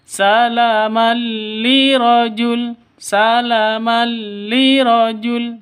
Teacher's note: tanwin bertemu dengan lam cara bacanya masuk ke lam tanpa dengung Kenapa karena idgham bilun bilunna idgham bilagagunna itu masuk tanpa dengung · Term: idgham bila gunnah